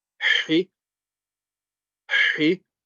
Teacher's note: The ha, remember, middle of the throat, so it's a quite strong sound